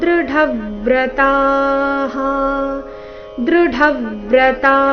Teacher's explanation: ಈ ಶಬ್ದ ಡ ಮಹಾಪ್ರಾಣ ರಸ್ವ ಅದರ ಮೇಲೆ ಆಘಾತ ಬರಬೇಕು ತ ದೀರ್ಘ ಹೇಳಿ ನಂತರ ವಿಸರ್ಗದ ಉಚ್ಚಾರಣೆ ಹ ಎಂದು ಹೇಳಬೇಕು ದೃಢವ್ರತಹ ಈ